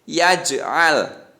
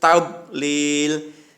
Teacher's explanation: Kalau jim ini mantul, yaj'al. Kalau tablil itu tidak boleh mantul, tapi harus tablil.